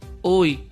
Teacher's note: Recuerda lo que hablamos de la Y, que se pronuncia aquí como vocal, por tanto forma un diptongo.